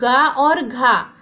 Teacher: तो गा और घा कंठ्य ध्वनि है। जो कंठ से निकलती है वो कंठ्य ध्वनि कहलाती है।